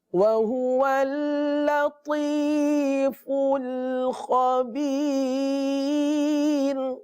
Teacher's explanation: وَهُوَ اللطیف، فل باریک ہے، خبیر خا پر ہے. تو لطیف میں تو پر ہے اور خبیر میں خا پر ہے، باقی سارے حروف باریک ہیں